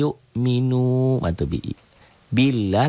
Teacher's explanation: lafaz Allahnya dibaca tipis Kenapa karena sebelum lafaz Allah baris di bawah